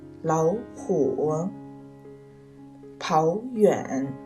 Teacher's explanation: 两个三声音节的字相连时，第一个字要读成二声音节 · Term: 三声变调